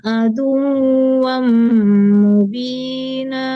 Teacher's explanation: sekedar di penekanan tasdid dal ke wau doang jangan dibawa hidung tidak dengung